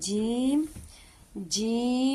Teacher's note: next آ گیا جیم، جیم چونکہ اس پر مد ہے، اسے 5 الف جتنا لمبا کریں گے، ناک میں آواز نہیں لے کے جائیں گے، دونوں دانتوں میں تھوڑا سا سپیس رکھتے ہوئے اسے ادا کریں گے